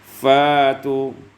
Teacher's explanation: fa'tu ibdal hamzati alifan, diibdalkan, ditukar hamzah dengan alif